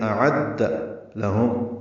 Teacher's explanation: اعد لہم لام کو جلدی پڑھنا ہے، میم ساکن پہ اظہار شفوی ہے